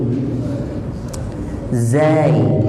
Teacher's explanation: tipiskan zai itu, jangan kayak orang Indonesia za itu tebal